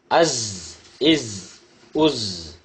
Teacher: The tip of the tongue near the inner plates of the upper central incisors. இரு உதடுகளையும் சேர்க்கக்கூடாது, இரு பற்களையும் சேர்க்கக்கூடாது.